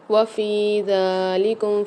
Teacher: وفی ذالکم فا کے ساتھ یا مد آ رہی ہے، ذال کے اوپر کھڑا زبر آ رہا ہے، اس کو بھی ایک ایک الف مدار کھینچ کے پڑھیں گے